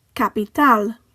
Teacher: ends in a consonant that is not an N or an S, so the stress falls on the last syllable